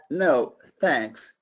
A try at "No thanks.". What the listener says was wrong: No, you gotta make it longer. No thanks. No thanks. No thanks. Your T's were too clear. I don't want your T's.